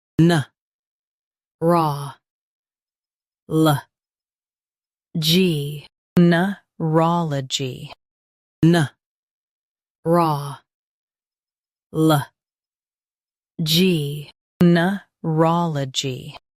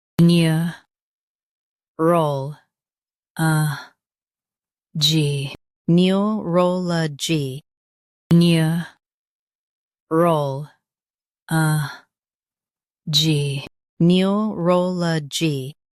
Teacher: Stress raw in US. Rol in UK. Keep neu soft.